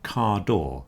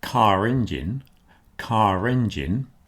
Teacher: Listen to car door. You're not hearing the R in car door. But when I say car engine, car engine, that R reappears.